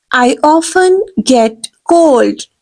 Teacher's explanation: T is silent here, right? You will pronounce the word often.